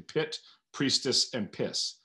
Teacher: we also have the p, that you know, this plosive, this bilabial plosive in pit, priestess, and piss